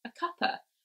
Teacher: And they would often push together and they would say cuppa instead of cup of. So there we've lost the O sound and we've lost the V sound, and that's just become a schwa